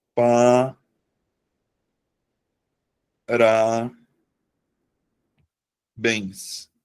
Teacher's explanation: Então, eu vou acentuar porque a sílaba tônica tá na última sílaba da palavra